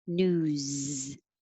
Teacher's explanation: it has voicing, so it sounds like a Z. News. So you already have your voice on when you're making ooh.